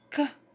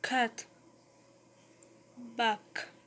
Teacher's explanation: The phoneme K has velar articulation point, that is, it is produced when the tongue touches the veil or velar zone.